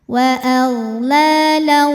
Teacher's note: Wa aghlala mad tabi'i muqaddar sebab harokatnya fathah panjang. Cara bacanya panjang 2 harokat.